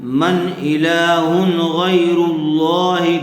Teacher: اظہار کا قاعدہ ہوگا، بغیر گننے کے جلد ظاہر کر کے پڑھیں گے